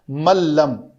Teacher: نون کے بعد لام ہے تو اس نون کو نہیں پڑھتے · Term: ادغام کامل